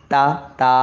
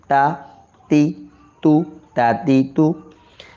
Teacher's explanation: जुबान की नोक ऊपर के दो दांतों की जड़ में